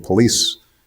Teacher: many of them don't put any vowels between P and L.